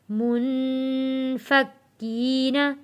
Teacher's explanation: کاف کے اوپر تشدید ہے سختی کے ساتھ، یہاں تھوڑا رک کر ہم کاف کو ادا کریں گے